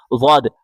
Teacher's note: زبان کی کروٹ بائیں یا دائیں طرف لگا کے پڑھیں